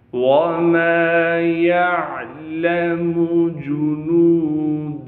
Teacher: आइन को साफ करके गले से निकालेंगे।